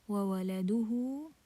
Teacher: So this is mad sila kubra, and mad sila kubra we prolong it for 4 counts.